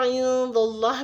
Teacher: दाल पे ज़बर है तो लाम जलाला को पुर यानी मोटा पढ़ेंगे